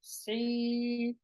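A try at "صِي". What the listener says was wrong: Sui. I feel like you're going in your throat. You're pushing it out from your throat. Okay, the heaviness doesn't come from your throat. So, su, sui, sui. It comes from the S. It starts off like a scene.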